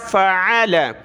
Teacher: عین کو گلے سے نکالنا ہے